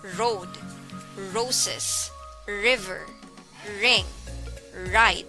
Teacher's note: formed by narrowing the airway at the back of the throat as air is pushed through and the vocal cords are engaged